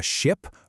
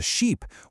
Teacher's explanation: The difference between telling someone you saw a ship versus a sheep, well, it all comes down to a tiny fraction of a second in how long you hold a vowel sound. It's that short, sharp I in ship versus the long, stretched-out E in sheep. That one little change completely alters the picture in your listener's head.